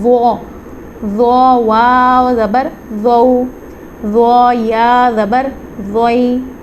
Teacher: ضو کو بھی سا اور ذال کی طرح نرمی سے ادا کریں گے، لیکن یہ مستعلیہ لیٹر ہے تو اس کو ہم پر بھی پڑھیں گے